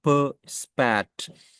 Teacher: दूसरा अन एस्पिरेटर जिसमें पफ नहीं होता यानी बर्स्ट नहीं होता